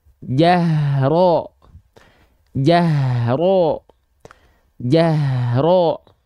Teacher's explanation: bunyi vokal o-nya dihasilkan dengan sengaja memuncungkan memonyongkan mulutnya ke arah depan